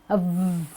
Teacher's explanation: So when you do a VV, you will have a vibration in your throat.